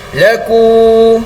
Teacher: huruf waw di sini dipanggil sebagai huruf waw mad asli. Bacaan dia sama saja seperti alif mad asli. Kadar panjang bacaan dia adalah sebanyak 2 harakat juga.